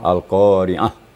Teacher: kalau kita berhenti pada ta marbuta itu maka cara berhentinya bunyi mematikan H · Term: ta marbutah